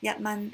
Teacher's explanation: yat is high tone, man is high